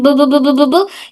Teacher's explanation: दोनों होंठ, अपर and lower lip, पूरी तरह बंद होते हैं। पहले दोनों होंठ पूरी तरह से बंद होते हैं और फिर खुलते हैं।